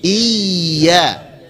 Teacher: Ditekan, ada nabr. Ditekan sedikit suaranya, yang ditekan ya-nya bukan i-nya